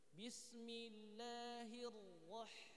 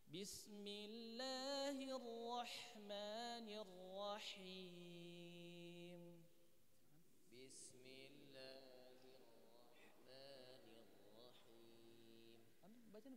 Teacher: ro makhrajnya hanya ujung lidah menyentuh langit-langit atas bagian depan Nah jadi hanya lidah yang digerakkan bukan bismillahirahirah bibirnya tidak bergerakang